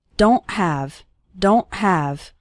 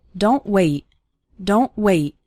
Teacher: it's more of a stop at the back of your throat the sound cuts off very suddenly